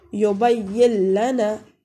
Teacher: ہمارے پاس مثالیں ہیں لام کی، یبین لنا، ویسے تو ہمارے پاس ہے یبین لنا، لیکن ہم جب ادغام کریں گے اس نون کو لام میں داخل کر دیں گے اور نون کو تلفظ نہیں کریں گے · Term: ادغام بلا غنہ